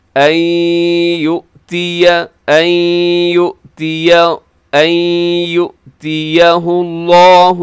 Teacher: ادغام ہو رہا ہے کیونکہ نون ساکن کے بعد یا یرملون کا